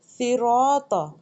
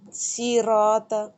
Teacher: صاد کو موٹا پڑھا جائے گا، موٹے حروف میں سے ہے، اور سین کو باریک پڑھا جائے گا۔ اب موٹے حروف میں آپ نے کبھی بھی اپنے ہونٹوں کو گول نہیں کرنا۔